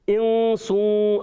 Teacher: اب یہاں نون ساکن کے بعد سین آ گیا، حرف اخفا میں سے اخفا ہوگا، غنہ کریں گے، ناک میں آواز لے جائیں گے